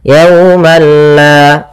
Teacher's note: tidak disertai dengan gunnah, sehingga langsung saja, tidak boleh ditahan, tidak dibaca yaumalla, tidak, tapi langsung saja yaumalla. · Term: idgham